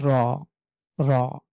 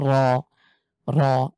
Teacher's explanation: মুখের ভেতরে ভরাট করে উচ্চারণের চেষ্টা করি তাহলে হবে র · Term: মোটা